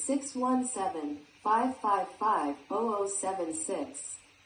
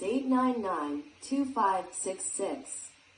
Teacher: When long sets of numbers are said out loud, these are also usually chunked in groups of 2, 3, or 4 numbers. Use rising intonation on each chunk except the last one, and insert a pause, after each item.